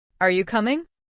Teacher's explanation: Your voice goes up on coming. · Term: rising